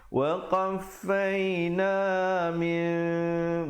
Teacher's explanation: Jadi bunyi nun itu ditukarkan kepada bunyi mim yang nipis sahaja. Bibir itu sekadar bersentuhan saja. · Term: iqlab